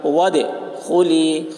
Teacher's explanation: دال کے اوپر، دال حروف قلقلہ میں سے ہے اور اس پر جزم ہے، اس لیے دال میں قلقلہ ہوگا. وادخلی، خا کے اوپر پیش ہے، پیش کو جلدی پڑھیں، تھوڑا بھی نہ کھینچیں، معروف پڑھیں، مجہول آواز سے بچیں